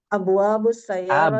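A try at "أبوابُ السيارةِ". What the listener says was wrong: Abwabu, jayyid.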